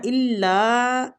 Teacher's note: الف مد کے ساتھ ہے، لا کو بھی کھینچیں گے